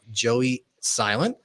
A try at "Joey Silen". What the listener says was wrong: you said it wrong. I heard a T on there.